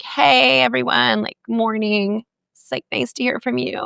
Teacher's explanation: that grating sounds that vocal fry is like bacon on a frying pan